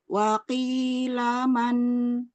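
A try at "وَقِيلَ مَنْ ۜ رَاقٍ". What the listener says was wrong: Belum, lanya masih naik. Waqilaman raq.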